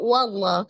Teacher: ada laf jalalah yang melekat pada lafaz Allah dibaca dengan tebal karena sebelumnya ada huruf berharakat Fathah di huruf wau